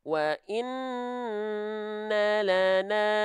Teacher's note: suaranya dia tetap harus mengalir sedikit tapi ketika mengalir suaranya sedikit dari huruf lam sukun jangan disertai dengan pantulan ya oke wa in Lana tuhnya jalan terus tanpa terputus ya